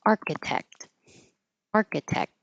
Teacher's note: I don't have to say the final T.